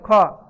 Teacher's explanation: क के बाद जैसे ख बोलेंगे ख। हवा निकलता है पूरा। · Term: महाप्राण